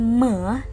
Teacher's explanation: bunyi Meh ini merupakan bunyi yang dihasilkan oleh dua bibir yang melibatkan rongga hidung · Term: bilabial Nasa